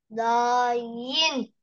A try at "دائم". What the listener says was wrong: آخر حرف ما لفظته، دايم، دايمة، هاي من العربي أصلا، دائما يعني.